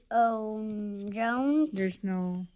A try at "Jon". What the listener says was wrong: There's no A there. It's only J O N.